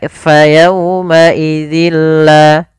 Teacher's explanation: Tapi ketika bertemu dengan huruf lam, maka tanwinnya ini dimasukkan ke huruf lam, sehingga kita namakan dengan idgham. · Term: idgham bila gunnah